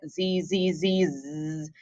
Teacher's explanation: in english z's vibrate if you say it z z z z you can hear it kind of vibrating on the top and bottom of your mouth